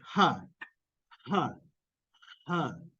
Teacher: so this sounds is exactly like in English huh huh huh you have air creating friction between your vocal Folds ah that is a glottal sound or a glottal fricative if